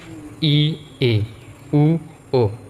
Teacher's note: সংবৃত স্বর ধ্বনি হচ্ছে যেগুলা মানে উচ্চারণ করতে ঠোঁট অল্প খোলে